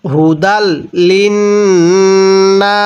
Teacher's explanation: এই নুনের মধ্যে গুন্নাহ করব, মিমে নুনে তাজদিদ গুন্নাহ করা ওয়াজিব, নুনের উপর তাজদিদ হলে গুন্নাহ করে পড়তে হবে।